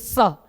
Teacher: सब्जी वाला स जब बोले तो अपनी जीभ को मसूरे पे टच करिए